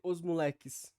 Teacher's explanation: às vezes pode acontecer o apagamento do do S final Então esse fonema S ele não seria realizado ou seria realizado como valor nulo